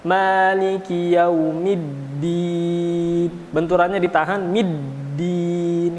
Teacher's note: Tidak ada qalqalah ya, karena di sana tasydid berarti langsung kecuali sukun. Ada sedikit benturan tapi tidak dilepaskan.